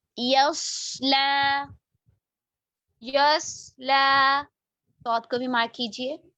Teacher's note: यस्ला, यस्ला, लाम मोटा नहीं करेंगे। देखिए, या बारीक, सौत मोटा, लाम बिल्कुल बारीक